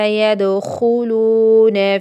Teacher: خو میں خا جو ہے وہ موٹا اور لو وہ مدہ